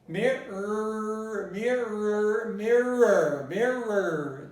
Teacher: So let's move on to another word that contains a difficult sound for many Brazilians, because we have the R sound here, which is a retroflex sound. I produce an R by making my tongue go back into the velum, and I say mirror, mirror, mirror, mirror.